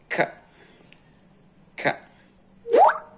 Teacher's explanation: It's velar, so you raise the back of your tongue to touch the roof of your mouth and then release.